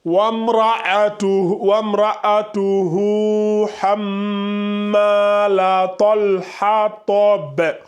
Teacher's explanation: Ok, moi, je vois que le hu ici, là, vous ne le faites pas en 2 secondes. Vous dites juste wamra'atuhu hammalat.